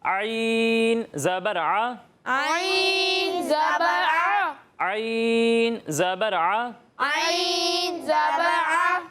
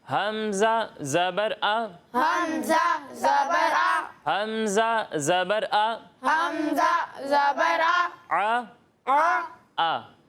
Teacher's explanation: ایک حرف عین جب آپ اس کی ادائیگی کریں گے تو اسے حلق کے درمیان والے حصے سے پڑھیں گے